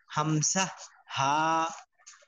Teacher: হলকের শুরু হইতে হামসা, হা, কোথাও বাধা খাবে না, একবার ভিতর থেকে বের হয়ে চলে আসবে।